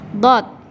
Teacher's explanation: Huruf dot ini teman-teman keluarnya berasal dari pangkal tepi lidah